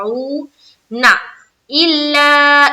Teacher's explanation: الا میں مد کریں گے اور یہ مد کی دوسری قسم یعنی کہ مد منفصل ہے